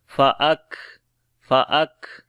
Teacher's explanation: کاف کے اوپر صفت شدت اور ہمس دونوں آئے گی ، سا کو نرم پڑھیں گے، را کو موٹا پڑھیں گے